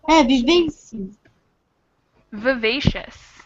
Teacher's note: This first I definitely becomes a schwa.